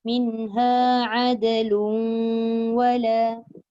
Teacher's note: Dal qalqalah, tanwin bertemu waw, masuk waw.